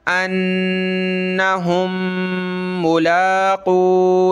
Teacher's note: पिछली मीम इस मीम के साथ मिलेगी, एक मीम बन जाएगी, एक ही पढ़ेंगे, नाक में आवाज़ पैदा करेंगे